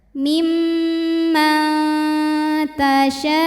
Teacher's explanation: Jadi ujungnya agak dihentak sedikit ya, dinaikkan intonasinya.